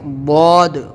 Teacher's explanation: تو اس کو ہم واد منہ بھر کے موٹا بولیں گے، اپنی زبان کا حصہ چوڑا کر کے اپنے اوپر والی دونوں طرف کی داڑھ جو ہے اس میں ٹچ کریں گے